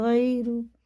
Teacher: اور یہ یا ساکن سے پہلے زبر جو ہوتا ہے، اور واو ساکن سے پہلے زبر، یہ حرف لین ہوتا ہے، اسے جلدی پڑھتے ہیں، بالکل بھی نہیں اس کو کھینچتے